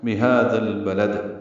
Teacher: بہذا اور البلد ملا دیں گے، ہاں پر کھڑا زبر دو حرکات لمبا ہے، دال کو نرمی سے پڑھتے ہوئے لام سے ملائیں گے، اظہار قمری ہے، لام کو دال سے ملائیں گے، لد میں دال ساکن پہ قلقلہ ہوگا وقفاً